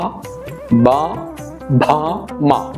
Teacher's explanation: ബ, ഭ, മ ചുണ്ടുകൊണ്ടാണ് പറയുക